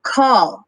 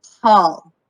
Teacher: the sound k is pronounced with the back of your tongue while ha is pronounced with the glottis which is behind your tongue